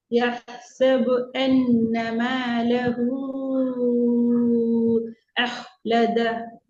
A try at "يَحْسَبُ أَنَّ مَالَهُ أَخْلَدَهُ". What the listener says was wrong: أخ வானத்தை நோக்கி போகணும். أخلد. أخلد. அந்த இடத்துல நிப்பாட்ட மாதிரி வரணும். மேலஹூ. இல்ல, மேலஹூக்கு பின்னால மூச்சு போற மாதிரி வரக்கூடாது. أخلد. أخلد. ماله أخلد. மேலஹூக்கு பிறகு இந்த மூச்சு போகுது. ஏட சவுண்ட் வரல.